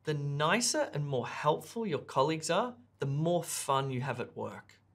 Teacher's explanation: notice the way I added stress to the words nicer and more fun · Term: sentence stress